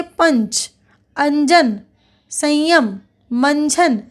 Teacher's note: च छ ज झ और म के पहले आने वाले अनुस्वार का य के समान उच्चारण होता है